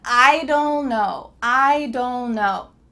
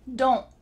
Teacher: Do you notice that that T in the contraction don't is similar to not in the previous sentence? That T, your tongue is at the top of your mouth, but you're not letting the air come out to finish that T sound.